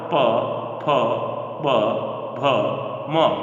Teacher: अगला सूत्र जो था वह था उपूपधमानिया नाम ओष्ठौ अर्थात ऊ और पू का अर्थ है पवर्ग, प, फ, ब, भ, म और उपधमानीय वर्ण, इनका जो उच्चारण स्थान है वो ओष्ठौ, दोनों ओष्ठ हैं